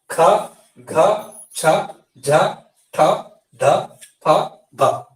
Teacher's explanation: వీటిని ఒత్తి పలికాము కాబట్టి ఇలా ఒత్తి పలికేటువంటి ఉచ్చరించేటువంటి వాటిని మహాప్రాణాక్షరాలు అంటాం.